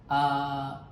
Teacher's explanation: di sini didapatkan dari suara pasien ada sedikit suara serak atau husky voice